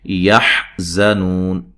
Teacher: زا کو زور سے پڑھنا ہے، یعنی کہ زور کی زا کی طرح، اور اس طرح سختی سے اس کو ادا کرنا ہے، سیٹی سے ادا کرنا ہے